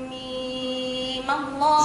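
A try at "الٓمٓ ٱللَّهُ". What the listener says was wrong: زيد شوية. ميم الله.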